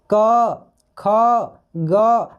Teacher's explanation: ये सब साउंड जो है हमारे कंठ से आ रहा है